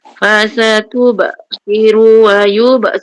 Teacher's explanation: Ru jangan panjang, satu je. Sebab tak ada depan dia waw.